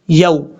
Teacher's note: واو لین کی وجہ سے اس کو لمبا نہیں کریں گے